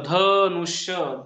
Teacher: दंत दातावरती यांचा उच्चार असतो नाही आपण जर म्हणल ध नुष्य धचा उच्चार करताना जीभ दाताला लागते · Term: दंत्य वर्ण